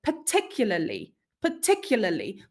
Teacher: word particularly particularly we don't pronounce all the letters right we we don't even pronounce a r sound anywhere even though it appears twice in the spelling